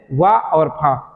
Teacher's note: दांत पर भी प्रभाव पड़ता है और होठों पर भी प्रभाव पड़ता है हवा छू के निकलती है